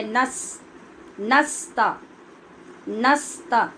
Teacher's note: نس نہیں پڑھنا، نون کے اوپر زبر پڑھنی ہے